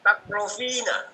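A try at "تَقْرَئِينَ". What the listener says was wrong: Kenapa jadi fa? Takro'ina, naam. Takro'ina gitu ya. Takroina. Kasroh, naam. Hamzahnya jadi kasroh.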